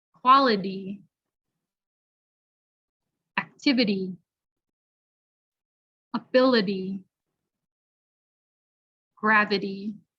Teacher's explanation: nouns ending in ity it sounds like idi